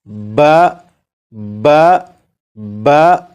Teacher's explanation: با زبر با کو اس طرح پڑھیں گے کہ آواز ذرا بھاری ہو